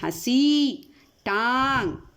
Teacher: अब देखिए अनुनासिक, इसका चिन्ह शिरोरेखा के ऊपर चंद्र बिंदु के रूप में लगाया जाता है। इसका उच्चारण करते समय हवा नाक और मुख दोनों से निकलती है, जैसे हंसी, टांग।